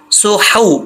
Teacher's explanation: ٹھیک ہے, صاد کے بعد جو ہا ہے, اس ہا کا تعلق حلق سے ہے, سینے سے نہیں ہے, اس کو کلیئر پڑھیں گے